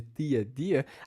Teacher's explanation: esse som dessas consoantes africadas, no lugar de t, d, que nós temos de tia, dia, não acontece com todas as vogais. Acontece só quando nós temos a vogal i, por exemplo, ou quando a vogal e é pronunciada como i, por exemplo, elefante, no final da palavra, por exemplo, na sílaba final, quando ela não é tônica.